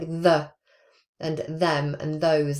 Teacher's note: the voiced dental fricative which is the voiced version